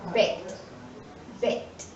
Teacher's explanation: The final sound of the verb bake is k. It is an voiceless sound. So, the past tense of the verb bake is baked, baked.